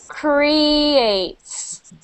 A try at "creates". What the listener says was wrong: A little better, but you really got to get your tongue back there. I can tell, I can hear your tongue is sticking out of, and it's going like this a little bit. Kri, kri. That's what it's doing.